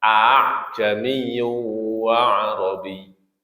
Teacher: Khususnya bagi orang Arab, mengucapkan dua hamzah secara berurutan seperti ini, maka hamzah kedua harus dilembutkan (tashil), diringankan. Di antara hamzah dan alif.